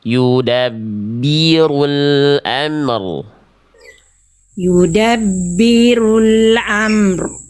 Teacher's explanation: Oke, ron-nya tegaskan. Tegaskan. Angkat pangkal lidah.